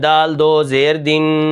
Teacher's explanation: غنہ کرنا ضروری ہوتا ہے، اور ہم اس کے اندر غنہ کرتے ہیں، یعنی ناک کے اندر آواز کو لے جاتے ہیں، اور اتنا لے جاتے ہیں جیسے ایک الف کو ہم پڑھتے ہیں، جیسے دال دو زیر دن۔